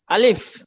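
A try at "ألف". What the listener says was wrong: দুই ঠোঁট একসাথে থেমে থাকবে না, দুই ঠোঁটের মাঝখানে ফাঁকা থাকবে শেষে।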